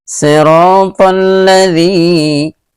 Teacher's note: Ini mad asli atau mad tabi'i, dipanjangkan sampai 2 harokat